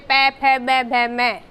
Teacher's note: जिसमें होठों का स्पर्श हो वो ओष्ठ कहलाते हैं।